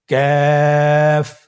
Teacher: কাফ উচ্চারণের ক্ষেত্রে অবশ্যই পাতলা করে উচ্চারণ করতে হবে এবং তিন আলিফ টেনে পড়তে হবে। · আবার বলুন কাফের মাখরাজ আমরা স্ক্রিনে দেখতে পাচ্ছি। কাফের মাখরাজ হলো জিহ্বার গোড়া থেকে একটু আগে বাড়িয়ে তার বরাবর উপরে তালির সঙ্গে লাগিয়ে উচ্চারিত হয়।